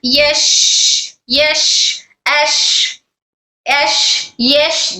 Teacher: जबान का दरमियानी और तालु का दरमियानी हिस्सा दोनों टच होकर हर शीन अदा होता है जबान का दरमियानी तालू के दरमियान से टच हो रहा है